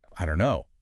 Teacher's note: So the t disappears. The vowel sound in don't also often reduces to a schwah or something close to it. And the two words just link fluidly. · So here, the source highlights the elision, the dropping out of the final T sound in don't. It just vanishes in casual speech before the K sound of no.